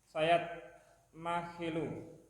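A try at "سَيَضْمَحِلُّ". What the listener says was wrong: Ya, lamnya tasdid sayat mahillu.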